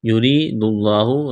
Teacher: را کو باریک کرنا ہے، را کے نیچے زیر ہے، یا مدہ ہے، ایک الف کے برابر کھینچنا ہے، لفظ اللہ کے نام سے پہلے پیش ہے، لفظ اللہ کے نام کو موٹا کرنا ہے.